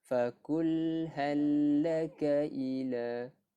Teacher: Kita tengok bila mana lam bertemu dengan lam, kita kena memasukkan lam yang pertama ke dalam lam yang kedua tanpa dengung.